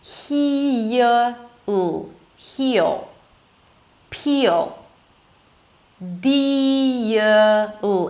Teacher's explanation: If there is a high E sound before the dark L, you hear a 'y' sound right before the L.